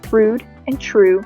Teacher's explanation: the vowel sound of oo is moving more towards the front of the vowel quadrilateral